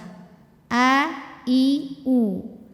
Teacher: fathah ini sebetulnya Hamzah wasal ya in ini kita bunyikan a keluarnya dari tenggorokan paling bawah